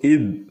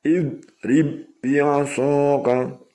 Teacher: Nah, id itu adalah huruf isti'la, maka mencucu id. Nih, kalau meringis id nanti menjadi dal.